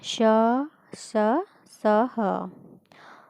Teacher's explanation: ऊष्म व्यंजनों का उच्चारण एक प्रकार की रगड़ या घर्षण से उत्पन्न ऊष्म वायु से होता है। ये 4 हैं: श, स, ह।